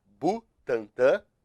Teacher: uma nasal aqui e outro aqui ela tem duas Butantã tem duas vogais nasais